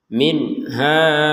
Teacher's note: bertemu ha ini sukunnya tertulis nih ini juga sukumnya tertulis minha jelas 100% jelas enggak ada dengung enggak ada samar sama sekali